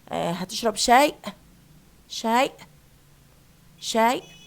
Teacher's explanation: they drop the final sound or consonant and they replace it by a glottal stop